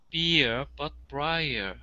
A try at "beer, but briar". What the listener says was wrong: Very nice. Very nice.